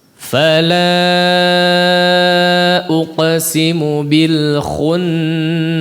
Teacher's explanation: Kemudian di situ diingatkan juga terkait nun yang bertasydid, maka perhatikan dari sisi gunnahnya